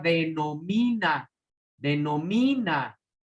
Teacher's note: Esta palabra tiene su sílaba tónica en mí. Si llevase acento ortográfico o tilde, caería aquí, donde cae la sílaba tónica.